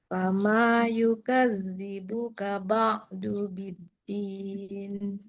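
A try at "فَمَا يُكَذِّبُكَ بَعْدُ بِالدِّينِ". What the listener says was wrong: Sekarang zalnya ditahan. Karena zalnya punya tasdid. Dalnya juga punya tasdid. Fama yukadzi.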